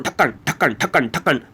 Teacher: जीभ हमारे तालू को छूते हुए एक झटके सा के साथ नीचे की तरफ आती है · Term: उत्क्षिप्त व्यंजन